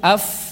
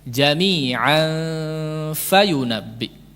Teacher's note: Makanya ketika ikhfa kepada huruf fa enggak perlu monyong sehingga jadi tebal. Nah, jadi kadang orang yang membaca ikhfa kepada huruf fa jadi tebal itu pengucapan huruf fa-nya agak memaksa.